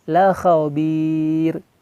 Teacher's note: Nah, di endingnya di situ tarkik. Ro-nya di sini tarkik karena sebelum ro ini ada kasrah.